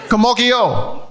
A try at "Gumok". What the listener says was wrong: Yeah, but it's like 2 syllables, not 3 syllables. Gumokyo.